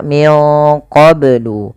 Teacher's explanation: qablu ini banyak harus dipantulkan karena ia ada bacaan qalqalah